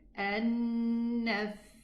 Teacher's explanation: the Tha has this air. Okay, it's one of the letters of hums, of whisper.